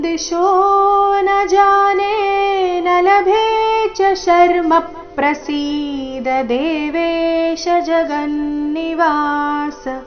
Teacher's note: ಮೂರನೇ ಚರಣದಲ್ಲಿ ಶರ್ಮ ನಲ್ಲಿನ ಮ ಮೇಲೆ ಆಘಾತ ಬರಬೇಕು